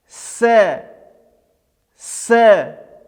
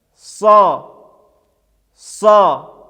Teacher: при произношении буквы син мы произносим ее мягко, а при произнесении буквы сад мы произносим ее твердо